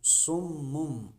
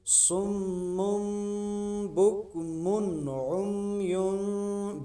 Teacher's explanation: نون ساکن اور تنوین کی آواز کو میم سے بدل کر پڑھیں گے، تو یہاں اقلاب ہو رہا ہے، ہم دو پیش کی تنوین کو کیا کریں گے، میم سے بدل دیں گے۔